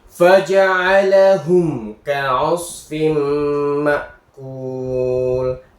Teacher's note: Jelas. Mim bertemu kaf dibaca jelas.